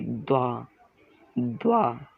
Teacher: ठीक है, द्वा, यानी द की ध्वनि आधी और व की ध्वनि पूरी, द्वा द्वा।